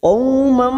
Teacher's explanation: Fathah tanwin bertemu mim idgham bi gunnah, siap masuk pada huruf depannya yaitu huruf mim. Mam dan ditahan selama 3 harokat.